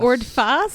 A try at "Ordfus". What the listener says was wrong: It's a U, Ordfus. Ordfus. Ordfus.